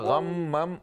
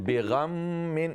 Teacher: मुशद्दद बेगम मिन, यहाँ भी मीम मुशद्दद है। दोनों मीम में गुन्ना करना है आपने